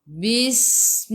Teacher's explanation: Masuk ke dalam sin ada sukun. Huruf sin, sifat hurufnya safir, kena bunyikan. Dia panggil apa? Berdesir.